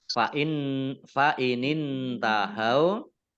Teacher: nun sukun bertemu dengan huruf ta, bacaan ikhfa, dibaca samar-samar.